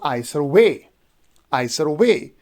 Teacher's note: So I would be unstressed, and sir would be unstressed, and way would be stressed.